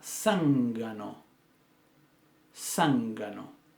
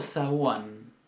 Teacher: Esa G de zángano, ¿cómo es? Es una G oclusiva.